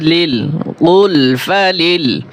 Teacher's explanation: কফ লাম পেশ কুল ফা জবর ফা কুলফা লাম লাম জের লিল কুলফালিল এখানে লাম পাতলা হবে মোটা করা যাবে না